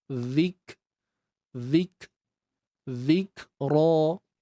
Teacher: Okey, matikan kaf ni dan kita kena lakukan dua proses. Yang pertama, kena tahan dulu suara. Zik. Tahan dulu. Kita kunci suara kita. Zik. Kemudian baru kita lepaskan sedikit nafas.